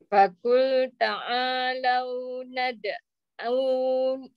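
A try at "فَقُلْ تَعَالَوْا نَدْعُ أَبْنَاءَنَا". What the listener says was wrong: tak panjang tak panjang nad'u abna'ana dia jadi nad'u abna satu saja ain pada baris depan lepas tu hamzah nad'u abna boleh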